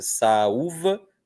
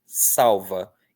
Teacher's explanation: o sonzinho de u é inteiriço, é forte, merece uma sílaba só para ele. No outro, o sonzinho de u, que está sendo representado pela letra L, não é tão forte assim.